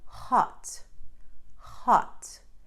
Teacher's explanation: the H and hot comes from the throat and is close to the Portuguese R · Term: strong R sound